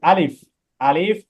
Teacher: আলিফ মুখের খালি জায়গা হইতে উচ্চারিত হবে